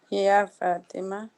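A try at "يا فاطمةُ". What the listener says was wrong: یا فاطمہ آپ حرکت نہیں چھوڑ رہی.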